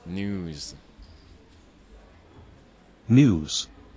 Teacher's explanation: L'astuce, c'est que le Z se transforme un petit peu en son S en vérité.